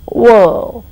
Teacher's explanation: Similarly, when you say world, there is O and R coming together in that word in spelling. In pronunciation, it gives you world. And then you say L and D. You don't pronounce R at all.